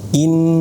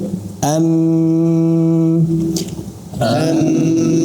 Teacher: Sempurna masuk hidung ee tidak ada suara dari mulut murni dari hidung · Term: gunah paling sempurna